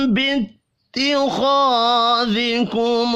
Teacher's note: میم ساکن کے بعد با ہے، اخفاء شفی ہوگا